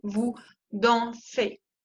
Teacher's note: la EZ se pronuncia E, como la E española